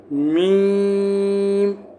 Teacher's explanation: میم جو ہے ایک الف کے برابر آپ کا کھینچے گا کیونکہ اس پہ مد ہے، تو ایک الف کے برابر اس کو کھینچنے کی کوشش کرنا.